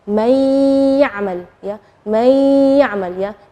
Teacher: Nunnya tidak jelas tapi ada suara dengung gunnahnya. May. Jadi itu namanya idgham.